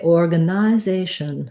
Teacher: the only difference for british english is that they say clear vowel here so they say organization so they use a true i their organization so that might be the difference that you hear